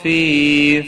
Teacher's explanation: فی یا مدہ ہے، ایک الف کے برابر کھینچ کر پڑھیں گے